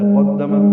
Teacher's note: قدمت میں قاف پر ہے، دال باریک ہے، تا ساکن ہے، تا باریک ہے، اس پہ ہمس ہے